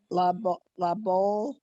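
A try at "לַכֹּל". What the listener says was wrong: That's a k, la kol.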